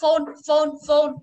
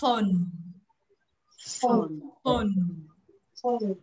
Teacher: chúng ta phải đưa môi lên răng, duy trì sát này